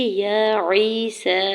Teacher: یا عیسی، یا کے اوپر کھڑی زبر ہے، دو حرکت کھینچ کے ادا کریں گے۔ یا ساکن سے پہلے عین کے نیچے زیر ہے یا مدہ ہو رہا ہے، دو حرکت کھینچ کے ادا کریں گے۔ سین کے اوپر کھڑی زبر بھی ہے اور مد منفصل بھی ہے، 4 سے 5 حرکت کھینچ کے ادا کریں گے۔